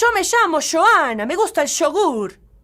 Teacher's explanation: they pronounce the y sound with a sh